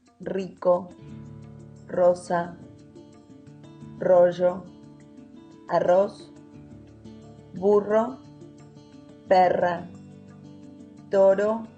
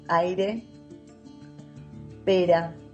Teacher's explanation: paying close attention to the rolling R or the single tap.